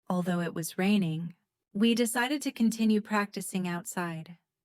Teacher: Notice how the stress falls on raining. Decided. Continue. And outside.